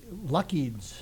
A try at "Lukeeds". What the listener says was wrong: Okay, very close, but that's the U is long.